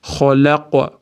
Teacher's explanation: Qofda sukun berib to'qtaganimiz uchun ham yug'on harf bo'lgani uchun yug'roq qalqal beramiz